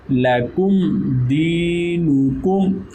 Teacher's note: میم ساکن ہے اور آگے دال ہے تو یہاں پر اظہار شفوی